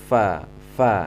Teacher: Berdesis. Ya, adapun nafas berhembus saat kita membaca fa. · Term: hamas